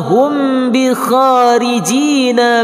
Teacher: mim sukun bertemu dengan ba hukumnya ikhfa syafawi berdengung 2 harakah.